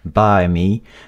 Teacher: la diphtongue I est prononcée de façon beaucoup plus compacte. By me, ça c'est non standard, d'accord, c'est l'accent du Minnesota.